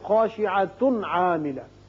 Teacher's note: تنوین کے بعد عین ہے اظہار کر کے